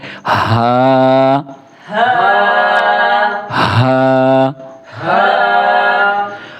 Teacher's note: ہا کو ایک الف کے برابر کھینچ کے پڑھنا ہے، ہا کو باریک کر کے پڑھنا ہے